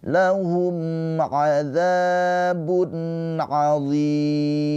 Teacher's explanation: Karena ada mad tabi'i bertemu dengan huruf yang disukunkan yaitu mim. Mimnya ini disukunkan karena berhenti ya ujung ayat, maka zi ini dipanjangkan boleh 2 harokat, 4 harokat atau 6 harokat. Mad arid lis sukun.